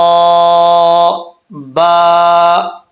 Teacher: دونوں ہونٹوں کا تری والا حصہ ملے گا تو با پڑھا جائے گا. اگر دونوں ہونٹوں کا تری والا حصہ نہیں ملے گا تو با کا مخرج سمجھ لیں کہ صحیح طریقے سے نہیں نکلا.